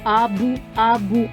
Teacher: А звук б теж приголосний бо повітря зустрічає перешкоду у вигляді губ теж твердий при звуковому аналізі позначаємо однією ризкою тільки він [музика] дзвінкий малята